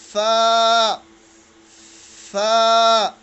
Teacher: this sound is formed with the upper teeth and lower lip